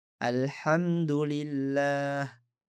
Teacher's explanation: Perhatikan bagaimana kita mengucapkan hamzah wasal di awal kata alhamdu karena kita mulai membaca dari sana.